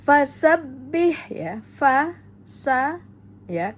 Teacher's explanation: kemudian ada tasdid pada ba, maka dihentak pada huruf ba-nya, bih, ya. Fasabbih, ya, langsung keluarkan hak mustahak pada hak tengah tenggorokan, ya.